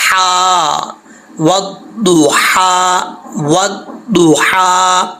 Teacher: ہا سٹینڈ زبر ہا، ہا کھڑا زبر ہا. یہ جو ہا ہے اس ہا کا تعلق حلق سے ہے، سینے سے، سینے کی طرف نہیں ہے. ٹھیک ہے، تو یہ حلق سے جو ہے وہ ہا نکلے گی، تو اس لیے اس کو بریک پڑھیں گے.